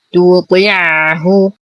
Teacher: نفخم الطاء بأقل درجات التفخيم